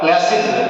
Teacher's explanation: Class is a sibilant hissing sound.